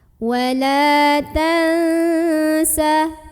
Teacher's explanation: ikhfa ausath karena ada nun sukun ketemu sama Heru vetsin maka cara membunyikan nun sukun nya ini adalah samar-samar menuju huruf Sin sambil dengung